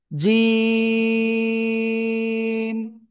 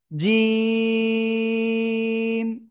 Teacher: জিহ্বার মধ্যখানা, তার বরাবর উপরে তালুর সাথে লাগাবো, লাগিয়ে 1 2 3 আলিফ টেনে পড়বো।